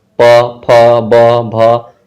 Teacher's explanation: ओठ जो है हम लोगों का सटता है, पूरा पवर्ग बोलने में सट जाता है दोनों, इसलिए इसको बोलने के लिए ओष्ठ का जरूरत होता है।